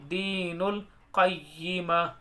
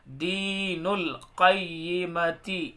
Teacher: last میں ح کی آواز آئے گی ہلکی سی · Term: ہائی ساکنہ